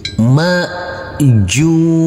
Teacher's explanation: huruf Jim karena kita wakafkan maka hukumnya wajib kita pantulkan karena ini adalah bacaan Qalqalah